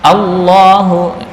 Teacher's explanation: A Allah a al ya ee bukan o tapi a. Nah, cuma ketika masuk di lam tafhimnya di mana? Di lam bukan di hamzah. Hamzah tetap a jangan o. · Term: lam dibaca tafkhim